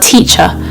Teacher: the word teacher, has an R on the end of it, but there's no vowel sound after the R. So we don't actually enunciate the R sound itself. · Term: non-rhotic